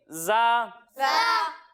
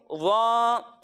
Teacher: اور پچھلے پروگرامز کے اندر ہم نے آپ کو بتایا ہے کہ ضا ان حروف میں سے ہے جن کو موٹا پڑھنا ضروری ہے، یعنی ضا حروف مستعلیہ میں سے ہے. تو یہاں ہم ضا کو موٹا کر کر پڑھیں گے اور باقی دونوں حروف کو ہم باریک پڑھیں گے